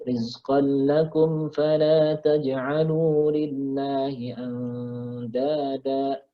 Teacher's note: Kalau mau diwasol itu bisa atau boleh tapi nggak boleh ditahan kumnya. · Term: idhar syafawi